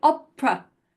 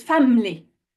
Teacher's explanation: And it usually replaces any vowel that is not stressed. So when you're saying opera, the E and the final A, they don't really sound, they don't have a full sound, they're being shrunk. They shrink into an sound. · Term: schwa sounds